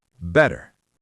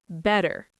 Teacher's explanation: That T becomes a soft D. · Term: T sounds change